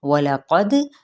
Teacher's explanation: دال پہ قلقلہ یعنی ہلائیں گے اس حرف کو، دال کو